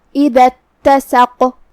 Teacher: کلمت اتسق میں یہاں شروعات میں حمزت وصل ہے. ہم یہ آیت کو ساتھ میں پڑھیں گے تو حمزت وصل کو ادا نہیں کریں گے، لہذا ہم حرف الدال کے بعد سیدھا حرف التا پڑھیں گے